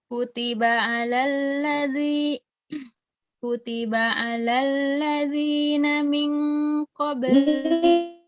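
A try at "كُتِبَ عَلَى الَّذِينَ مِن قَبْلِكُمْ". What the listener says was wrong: Ikhfanya, ingat ikhfanya. Pada saat bertemu dengan qaf itu rentan ya. Jadi seperti bacaannya terkadang malah dimasukkan ke qaf.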